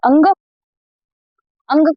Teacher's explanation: अंग को आप नाक बंद करके नहीं बोल सकते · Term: अनुस्वार